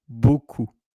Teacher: And of course, you don't pronounce the P.